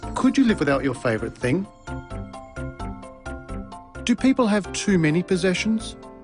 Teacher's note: did you notice the pitch of his voice rise at the end of the questions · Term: Rising interation patterns, Rising intonation patterns